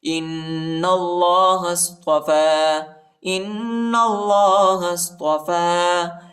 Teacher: ہا کو صاد کے ساتھ ملائیں گے، الف نہیں پڑھا جاتا، الف کے اوپر حرکت نہیں. إِنَّ اللَّهَ اصْطَفَى، إِنَّ اللَّهَ اصْطَفَى، إِنَّ اللَّهَ اصْطَفَى، یا نہیں پڑھا جاتا، یا پر حرکت نہیں ہے، ٹھیک ہے، اور فا پر کھڑا زبر ہے، اس کو ایک الف کی مقدار تک کھینچیں گے. · حمزہ کو نون کے ساتھ ملائیں گے اور غنہ کریں گے اور نون کو لام کے ساتھ ملائیں گے، الف نہیں پڑھا جاتا، الف پر حرکت نہیں ہے، اور ہا کو صاد کے ساتھ ملائیں گے، الف نہیں پڑھا جاتا، الف کے اوپر حرکت نہیں.